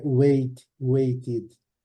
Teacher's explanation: a forma base termina com o som de t a sílaba tem que ser pronunciada separada